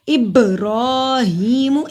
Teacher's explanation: इब पे कलकला किया, बा जिस्म की सूरत में, और रॉ को मोटा पढ़ेंगे। रॉ पे खड़ी ज़बर है, रॉ को 1 अलिफ के बराबर लंबा भी करेंगे क्योंकि खड़ी ज़बर को 1 अलिफ के बराबर लंबा किया जाता है।